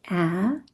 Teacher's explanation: So you can see with the sound ah, our mouth is open. Our tongue is a little bit kind of in the middle of our mouth.